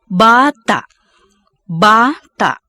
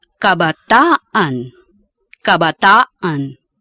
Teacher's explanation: The glottal catch is lost when a suffix is added after the final vowel.